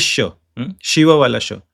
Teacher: The the back side of the tongue touches there while chanting ch and sh also uh this sh also comes here. When you don't touch the tongue and still try to pronounce ch it becomes this sha